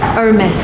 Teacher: It's a French brand, so you don't pronounce the H.